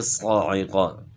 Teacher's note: اچھا، صاعقہ صاد اور قاف جو ہے موٹے حروف میں سے، حروف مستعلیہ میں سے، اس لیے ان کو موٹا پڑھنا ہے، اور موٹا پڑھنے کے لیے زبان کو تالو کی طرف اٹھانا ہے، اور عین کی آواز گلے کے درمیان سے نکالنی ہے